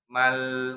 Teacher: Jadi ada aliran suara tapi tidak terlalu panjang, pertengahan antara tertahan sama mengalir ya. Namanya tawasud ya.